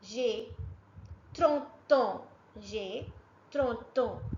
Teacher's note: It is ending with the consonant sound t. So that's why this t sound must be linked with the vowel sound a.